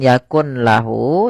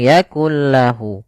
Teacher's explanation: Yaitu idgham artinya kita memasukkan, sehingga di sini bukan yakun lahu tapi langsung yakul lahu. Langsung dimasukkan ke huruf lam setelahnya. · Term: idgham bila gunnah